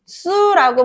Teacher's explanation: 종성 자리에 있는 눌림 예사소리 기역이 그 뒤에 있는 눌림 예사소리 시옷의 영향을 주게 되면서 국수라고 발음이 되는 것이고요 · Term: 된소리